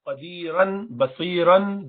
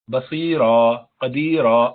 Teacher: مد العوض تھا وہ یہ کہ دو زبر جب ہوں تو اس کے بعد ایک الف پڑھا جاتا ہے۔ تو کتابن تھا، قدیرن، بصیرن، دو زبر، لیکن پڑھتے ہیں اس کو روکتے وقت خالی بصیرا، قدیرا، ایک الف لگا دیتے ہیں سمجھانے کے لیے کہ یہاں ایک الف پڑھو، جبکہ دو پیش یا دو زیر میں ایسا نہیں کیا جاتا۔